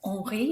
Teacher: the H is not said. Henri is a silent H.